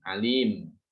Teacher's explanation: tanwinnya tidak boleh dibaca, ya, berubah menjadi sukun